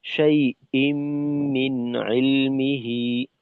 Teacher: হামজা যেহেতু সিদ্ধার হরফ, তাই এর উচ্চারণকে শক্ত রাখতে হবে।